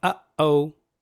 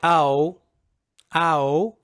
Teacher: it's called a glottal stop so there's no sound silence